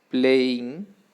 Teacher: two syllables first syllable play and second syllable in playing but the syllable which receives stress is the first syllable the stress doesn't change it doesn't go to the second syllable